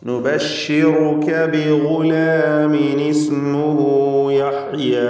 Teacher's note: ഇവിടെ ബിഗുലാം ഗൈനിന് തഫ്ഖീം കൊടുക്കണം, ഇസ്തിഅലാഇൻ്റെ ഹർഫാണ്. ബിഗുലാമിൻ ഈ പദത്തിൻ്റെ അന്ത്യത്തിൽ തൻവീനുണ്ട്.